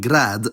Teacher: Serbian does not do the word-final devoicing allophone found in so many other Slavic languages. So for example, in grȃd, the [d] is still voiced.